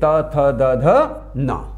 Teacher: जब हमारी जीभ दांतों या दांतों की जड़ों को छूती है तब जाकर के त वर्ग का निर्माण होता है